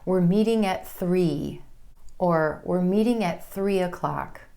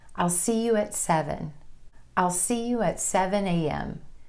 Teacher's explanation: So 8:15, 9:45, 2:30. If you're talking about on the hour, your emphasis is going to be on that number.